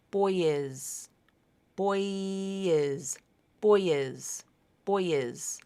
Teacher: you use that Y sound to link the two vowels together and you keep your vocal cords turned on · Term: vowel to vowel linking, vowel-to-vowel link